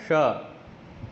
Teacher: जीभ हमारा ऊपर लगता है तालू से ठीक है राइट तब बनता है श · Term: तालव्य